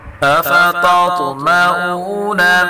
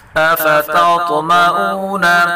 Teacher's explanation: پہلے تا کو باریک پڑھیں گے اور طا کو پر پڑھیں گے، طا میں قلقلہ بھی کریں گے